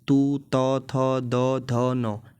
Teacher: आगे है लरतु लसानाम दंत, लरतु लसानाम दंत का अर्थ है कि यहाँ पे दंत से उच्चारण होगा इन वर्ण का